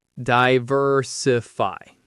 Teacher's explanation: The stress is on the ver.